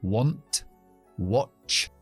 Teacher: Querer es una excepción porque la A se pronuncia como una O